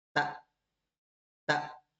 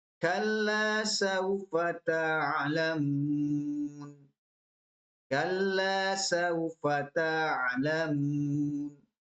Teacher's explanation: Kalau yang suaranya putus berhenti itu huruf hamzah. Kalau pakai hamzah bunyinya tak tak. Tapi kalau pakai ain ada ekornya.